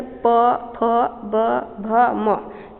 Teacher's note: प का देखिए प, फ, ब, भ, म ये होठों का स्पर्श करता है।